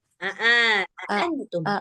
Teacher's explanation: A-nya juga dua-duanya harus hamzah. Jangan mirip ain satunya.